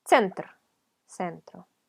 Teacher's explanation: La siguiente, es como una U con cachito, si la vemos como con ojos de un hispanoparlante, es una T. T y S pronunciadas juntas, rapidito.